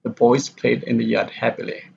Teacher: happily here is the falling intonation